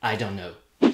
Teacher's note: Par conséquent, ce T devient presque un N pour faciliter la prononciation du N de know. Le T a été assimilé par le N, ce qui donne I don't know.